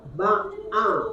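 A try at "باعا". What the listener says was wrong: Kurang sedikit tekan.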